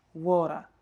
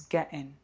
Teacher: in some variations of UK accents, the glottal stop might come in the middle. So something like getting becomes getting.